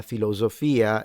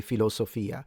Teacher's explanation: So, z versus s is a distinctive feature of Italian accents.